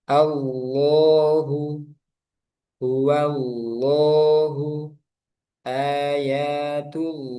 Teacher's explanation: Sehingga bacanya Allah, jangan Allah. Allahu, tebalkan. Pangkal lidahnya naik.